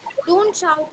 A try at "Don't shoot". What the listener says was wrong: Don't shoot. Don't shoot. It's not shout, it's shoot.